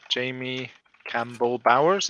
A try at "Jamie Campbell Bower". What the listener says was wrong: Bower, no S. No S.